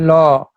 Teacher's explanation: জিভের এক পাশ দিয়ে বা জিভের দুই পাশ দিয়ে বাতাস বেরোয় বলে এটা, পাশ দিয়ে বাতাস বেরোয় বলে এটাকে পার্শ্বিক ধ্বনি বলে।